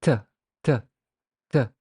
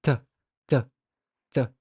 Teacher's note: Try to say the sound t, t, t, and put your hand in front of your mouth, and you can feel that explosion or puff of air. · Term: stop